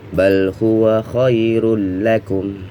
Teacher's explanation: Bal huwa pendek, khairul nun tanwin bertemu dengan huruf lam ya, maka idgham bila gunnah, jangan didengungkan ya, dan masuk langsung ke huruf lam. Tanwinnya, suara tanwinnya hilang.